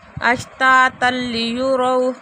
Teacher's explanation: تنوین کے بعد لام آ رہا ہے تو غنّے کے بغیر ادغام ہو رہا ہے